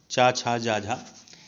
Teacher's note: तालव्य वर्ण आपका चा वर्ग होता है